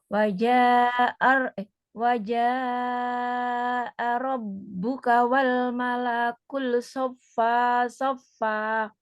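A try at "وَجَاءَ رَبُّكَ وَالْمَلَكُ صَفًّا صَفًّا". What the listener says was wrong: Di sini ada tanwin, wal malaku saffan saffa. Bukan wal malakul, tapi wal malaku. Saffan. Ini mungkin kurang jelas sih, atau cuma fathah, harusnya tanwin. Saffan, saffa.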